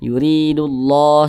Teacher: Maka biasa disebut juga dengan idgham syamsiyah. Kemudian kalimat Allah dibaca panjang · Ini kalimat Allah nih, di atasnya ada alif kecil, maka kalimat Allah dibaca panjang. Mad tabi'i, panjangnya 2 harokat atau kira-kira 2 ketukan